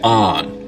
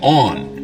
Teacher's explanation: North of this line, most people say on, rhymes with don. South of it, they say on, rhymes with dawn. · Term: the on line